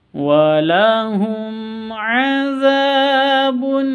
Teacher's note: mim mati bertemu dengan Ain bacanya jelas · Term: izhar syafawi